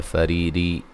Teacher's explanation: را کو باریک پڑھیں گے اور یہ یا مدہ ہے